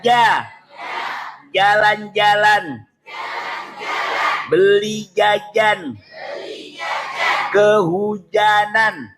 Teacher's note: nggak ada udaranya yang keluar loh. Kadang-kadang wajah, nggak punya sifat hamas jim itu.